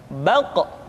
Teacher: diucapkan dengan suara yang tebal dan dalam posisi sukun maka terdengar pantulan suara